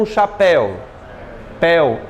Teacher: É aberto, portanto ditongo aberto